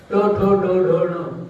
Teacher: जिभेचा अग्र टाळूच्या मध्ये लागतो.